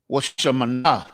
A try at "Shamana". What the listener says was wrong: There's no wa, but it's just